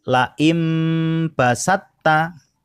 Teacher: To bertemu dengan huruf ta, maka to-nya diabaikan masuk ke huruf ta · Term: idgham mutajanisaini